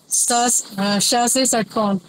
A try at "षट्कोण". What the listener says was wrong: श से षटकोण। बताओ, श पहला ठीक बोल दिया और फिर षटकोण पे आ गए। ये जो श वाला जो उच्चारण हुआ है यहाँ गलत हो गया, बार बार हुआ। और अलर्ट रहेंगे तो ये वाला ठीक हो सकता है।